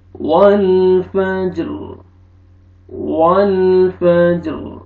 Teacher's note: وقف کی صورت میں را ساکن ہو جائے گا، را کو پر کریں گے کیونکہ را ساکن اس سے پہلے ساکن ہے، ساکن سے پہلے زبر ہے تو آپ نے پر کرنا ہے را کو، ٹھیک ہے۔